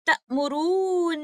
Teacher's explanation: We recited by applying maddul ladhim kalmi musaqqal and giving most complete gunna. So this type of idgham that is happening in these words is called idgham kabir, because originally the first letter is mutaharrik, but due to ease of pronunciation, we merge it into the second one. · In the last word, Surah Zumur, ayah number 64, تَأْمُرُونِي which originally is ta'murunani, but the first letter noon, originally which is mutaharrik, acquires a sukoon and merges into the second letter noon